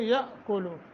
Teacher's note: حمزہ ساکن ہے جھٹکا دے کے پڑھیں گے